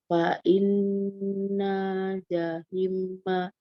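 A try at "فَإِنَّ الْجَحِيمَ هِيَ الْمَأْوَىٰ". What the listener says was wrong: Hati-hati jangan jahim. Kalau jahim itu mimnya terus jahima ya. Jahim. Lagi fa innal jahima, hi-nya panjang.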